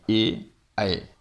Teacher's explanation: फिर कंठ और तालु से बोले जाने वाले 2 वर्ण ही है जिसका नाम है कंठ तालव्य, जो आते हैं ए, ऐ।